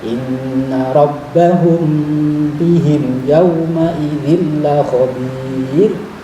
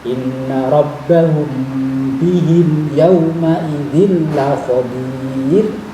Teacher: Inna rabbahum, mim sukun bertemu ba didengungkan